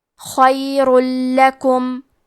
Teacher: کلمت خیرن میں خا کے ادائیگی حلق کے اوپر والے حصے سے ہے. خا حروف تفخیم میں سے ہے تو ہم یہ حرف کو موٹی آواز میں پڑھیں گے. · ادغام کا معنی ہے حرف کو حرف میں داخل کرنا تو ہم تنوین کو لام میں ملا کے بغیر غنہ سے لیکن تشدید کے ساتھ یہ حکم کو ادا کریں گے